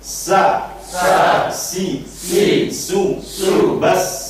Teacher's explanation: So itu termasuk satu paket, satu makhraj. Ujung lidah dengan rongga, ya, rongga dua buah gigi tapi agak ke bawah. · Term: sin